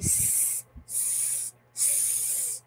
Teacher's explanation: there is no vibration right so that is voiceless